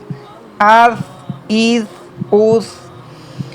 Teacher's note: ثا میں سیٹی کی آواز بھی نہیں ہے، اس کو سختی سے بھی نہیں ریڈ کریں گے بلکہ آرام سکون سے اس کو ریڈ کریں گے